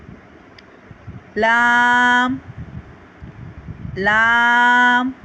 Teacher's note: जुबान का किनारा और आगे की दो दाढ़ समेत दांतों की जड़ से अदा होता है · زبان کا کنارہ اور آگے کی دو داڑھوں سمیت دانتوں کی جڑ سے ادا ہوتا ہے۔ لام، لام، ہماری زبان دانتوں کی جو آگے کی جڑیں ہیں اس سے ٹکرائے گی۔